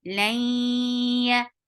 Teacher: For fatha, open your jaws, attach this is idgham with gunna. So keep the sound in your nose for a longer time because this is akmal gunna, the longest gunna in Quran. Lay. Yeah, is very soft.